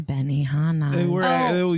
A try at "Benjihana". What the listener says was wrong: You're in the wrong place, and this is Benjihana. With a J, Benji.